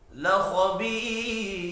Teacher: बी या मद्दा है, एक अलिफ के बराबर खींच कर पढ़ेंगे। वफ की सूरत में रॉ साकिन पढ़ा जाएगा।